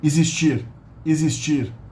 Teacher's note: Here the X is followed by a vowel, so it actually acquires the Z sound.